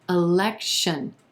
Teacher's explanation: our first syllable is going to be super quick as is our third syllable